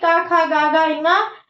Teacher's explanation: अगर वो अपने वर्ग के साथ आता है कि का खा गा गा इंगा, ये कहां से बोले जाएंगे, तो ये आपके कंठ से बोले जाएंगे क्योंकि का वर्ग कंठ में आता है।